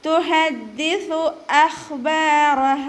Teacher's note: ദാലിന് ശബ്ദ വന്നിട്ടുണ്ട്, 2 ഹർഫുകൾ ഉച്ചരിക്കുന്ന കനം കൊടുക്കുക · ഖ ഇസ്തിഅലാൻ്റെ ലെറ്ററാണ്, നല്ലോണം തഫ്ഹീം ചെയ്തിട്ട് ഉച്ചരിക്കുക. ബഇൻ്റെ കൂടെ അലിഫ് മദ് വന്നിട്ടുണ്ട്, 2 കൗണ്ട് നീട്ടി കൊടുക്കുക.